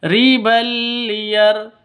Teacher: tanwin bertemu dengan lam masuk ke lam tanpa dengung Kenapa karena ini bacaan hukum bacaan Idgham bila ghunah idgham masuk